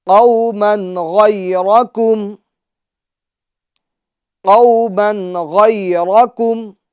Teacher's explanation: جی، number 1 قاف یہ حروف مستعلیہ میں سے ہیں تو اس کو پور کریں گے. نمبر 2 قو، اس میں واو لین ہوگا، ٹھیک ہے، اور حروف لین کو بغیر کھینچے، بغیر جھٹکا دیے نرمی سے معروف پڑھتے ہیں. قومن، من کی تنوین میں اظہار ہوگا، یعنی گناہ نہیں کریں گے، کیونکہ تنوین کے بعد حروف حلقی میں سے غین آ رہا ہے تو گناہ نہیں ہوگا.